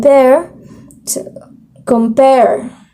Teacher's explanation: because the stress is on its second syllable, which is the pair. So, di ba ang pagbasa natin as the stress is in pair, compare.